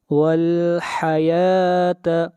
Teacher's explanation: یا کو کھینچ کر پڑھیں گے، ایک الف کے برابر